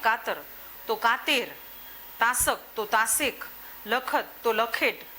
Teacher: અમુક સંજોગોમાં એ અનો એ કરી નાખે